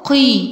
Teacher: اولا القاف قي، قاف مفخمة